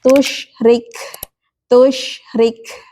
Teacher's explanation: Kaf ini sifatnya harus disiddah dulu, harus ditekan dulu ya.